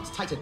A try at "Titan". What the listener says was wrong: Don't pronounce the second T that hard.